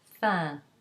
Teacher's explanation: So for example, if you have the adjective fin, you have F-I-N, the N is not pronounced because it's in word final position, but the I in front of it becomes nasal into the sound fin.